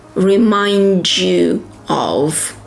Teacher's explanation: Connect D and Y becomes J.